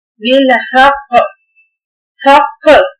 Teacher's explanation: काफ को हिलाएंगे, हक करके नहीं रुकेंगे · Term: हरूफे कलकला